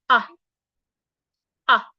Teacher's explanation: To articulate the inverted V sound, your mouth is not rounded. Your mouth is opened just a bit like this.